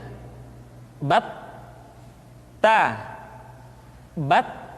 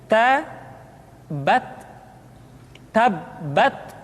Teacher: Ta. Kemudian huruf Ta ketika diucapkan terdengar ada nafas yang mengalir, atau dalam ilmu tajwid disebut dengan sifat al-hamas